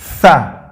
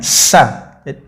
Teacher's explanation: Ujung lidah, ujung gigi, kemudian meniup.